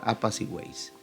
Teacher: la fuerza o la tilde en este caso recae sobre la vocal abierta que es la vocal e Por tanto se puede hacer una sola emisión de voz Tenemos · Una vocal cerrada, una abierta y otra cerrada. Veamos que la fuerza o la tilde en este caso recae sobre la vocal abierta, que es la vocal E. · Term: triptongo